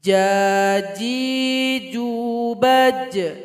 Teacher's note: Ketika sukun ada bunyi qalqalah, ada pantulan.